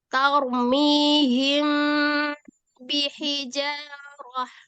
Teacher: Nah, cara pengucapannya mimnya samar ya. Mimnya samar tetapi disertai dengan gunnah yang panjang. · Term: ikhfa safawi